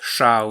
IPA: ʃ̺aw